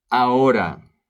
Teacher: Ahora, the H is silent.